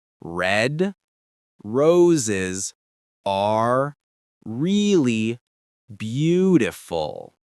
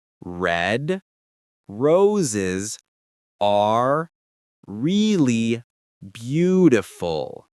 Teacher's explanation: Your tongue stays curled back the whole time, floating in the middle of your mouth. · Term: R sounds